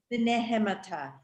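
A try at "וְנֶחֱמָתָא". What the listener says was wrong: It's a chet. You got to do the ch.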